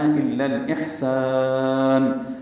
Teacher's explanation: لیکن اس کو الاحسان کے لام سے ملانا ہے، الا الاحسان، اب سین کو ہم زیادہ لمبا کریں گے اور نون ساکن پہ وقف کرتے ہوئے اظہار ہوگا کیونکہ مد عارض سکون بنائی ہے، یعنی مد وقفی بنی ہے،